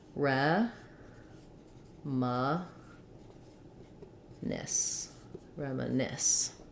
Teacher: So for reminisce, we have last syllable stress. We have the F vowel here.